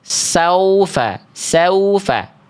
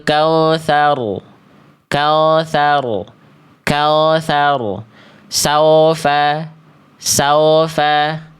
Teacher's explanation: Yang seharusnya bunyi vokalnya u bukan o. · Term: wau bersukun